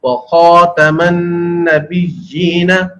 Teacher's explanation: غین اور خا، یہ دو حروف ایسے ہیں جو عربی کے اندر پر یعنی موٹے پڑھے جاتے ہیں اور اردو کے اندر یہ نارملی پڑھے جاتے ہیں.